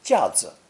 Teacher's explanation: a shelf alone would be 架子, with the neutral tone 子. Given the high number of homonyms, for clarity's sake, this unstressed 子 tells your listener that 架子 is a noun.